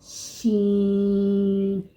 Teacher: شین زبان کے درمیان اور مقابل تالو کے ملاپ سے ادا ہوتا ہے